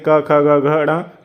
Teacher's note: क वर्ग के जो भी होंगे क ख ग घ ण ये सब कंठ में आएंगे